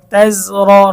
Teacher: আং তুম তাজা জবর তেজ, র জবর র, তেজ র, রয়ের উচ্চারণ মোটা কারণ রয়ের উপরে জবর।